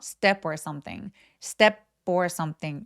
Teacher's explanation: step 뒤에 모음 소리 or가 왔잖아요. 이럴 때에도 P가 연음되면 약간 된 소리가 납니다.